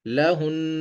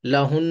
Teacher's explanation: آواز کو ناک میں لے کے جائیں گے اور ایک الف کے برابر ٹھہرائیں گے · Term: غنہ